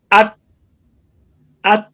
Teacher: जबान जो है ये सामने वाले दांतों के साथ लगी है